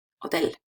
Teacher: So, the stress is on the last syllable, hotel.